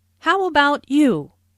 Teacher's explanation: Notice the intonation falls here because the speaker is going to follow it up with a detailed question.